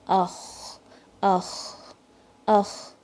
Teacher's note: ان letters میں کوئی جھٹکا نہیں دینا ہے اور قلقلہ نہیں آنی چاہیے، کوئی باؤنس نہیں ہونا چاہیے · جب اس پہ سکون آتا ہے تو ساؤنڈ فلو ہوتی ہے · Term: فلو آف ساؤنڈ